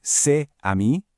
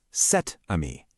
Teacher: We basically slide that little t sound in there to build a bridge between the two vowel sounds.